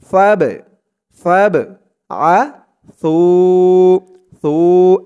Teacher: এই বাটা হচ্ছে কলকলার হরফ, ধাক্কা দিয়ে পড়তে হবে। ফাব আ সু, এক আলিফ টান, পেশের পরে ওয়াও সাকিন, সু।